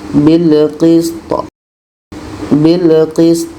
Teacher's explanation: hukumnya qalqalah. Qalqalah kubra ada pantulan